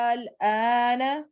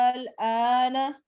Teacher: حروف مدہ کے بعد اگر اگلے حرف پر جزم ہو تو اس کو مد لازم کلمی مخفف کہتے ہیں، اور اس کو بھی 5 سے 6 الف کے برابر لمبا کرتے ہیں